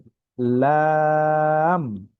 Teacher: বাংলায় যে ল আছে, ল কার লা, এরকম পাতলা ভাবে উচ্চারণ হবে, লাম।